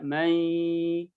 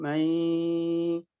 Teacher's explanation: ya berarti nunnya itu dimasukkan ke huruf ya sehingga dibacanya mai. Tapi ada satu sifat nun yang tidak bisa hilang, yang tidak lebur, yaitu gunnah. Sehingga gunnah tetap ada, sehingga dibaca mai, masuk ke hidung mai. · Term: idgham naqis